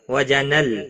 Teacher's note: جن نون مشدد ہے، یہاں پر غنہ ہوگا